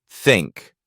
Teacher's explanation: it's made by putting your tongue between your upper and lower teeth and letting air flow out